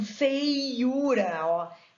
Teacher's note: Vai cair no U, a sílaba tônica, e vem o EI antes, que é um ditongo